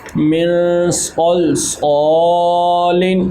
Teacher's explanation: صاد حروف مستعلیہ میں سے اس لیے پر کریں گے اور آگے ایک الف کی مقدار کے برابر اس کو ہم لمبا بھی کریں گے کیونکہ یہاں پر الف مدہ ہے.